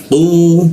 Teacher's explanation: Qa itu posisinya di siku tenggorokan, lidahnya kita naikkan sehingga tidak ada hembusan udara ketika mau membaca qa.